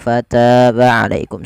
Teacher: ta di sini ada mat tabi'i, yaitu bertemu dengan alif panjangnya 2 harakat